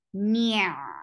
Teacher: For ayn, give tawassut, and ayn should be pronounced from your throat